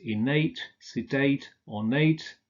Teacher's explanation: The adjectives innate, sedate, ornate are stressed on the final syllable.